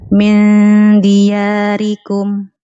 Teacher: Nun sakinah mukhfah 'inda dalil maqsurah bi gunnah harakatain